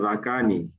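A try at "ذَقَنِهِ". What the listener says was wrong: Nah, kof bukan kafa, zakoni bukan zakani.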